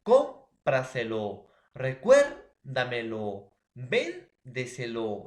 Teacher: si la mayor fuerza de voz está en la tras antepenúltima sílaba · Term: sobresdrújula